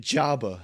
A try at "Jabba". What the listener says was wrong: emphasis on the wrong syllable.